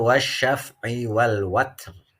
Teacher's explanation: Kalau dibaca waqaf, ro tafkhim, ro-nya tebal. Tapi kalau memberlakukan waqaf mamnu lalu dibacanya menjadi wasal atau sambung, maka terjadinya ro tarqiq.